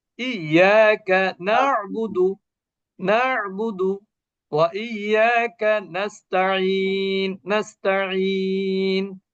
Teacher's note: আইনের উচ্চারণ গলার মধ্যভাগ থেকে উচ্চারিত হয়